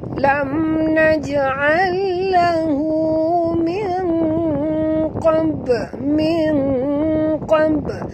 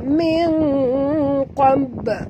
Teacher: Nun mati bertemu qaf, kita kena sembunyikan bunyi nun ke dalam huruf qaf disertai dengung harakat. Sembunyikan pada kadar 50%. Bukan sembunyi semua. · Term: ikhfa